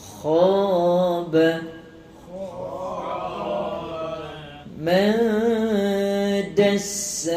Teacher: Pastikan kita rasa sakit dia dekat lelangit tu, seakan-akan nak buang kahak